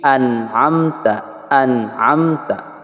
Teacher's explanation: Yang seharusnya adalah an'amta, an'amta. Kemudian pada nun matinya tidak boleh ada qalqalah atau pantulan. Sehingga tidak boleh an'am, an'am, tidak boleh.